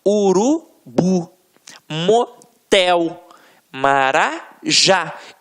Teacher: Reparem que na hora da pronúncia, de forma mais aguçada, você vai perceber que realmente a pronúncia da última sílaba ficará mais forte. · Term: oxítonas